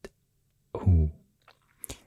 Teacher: this is the glottal stop followed by U sound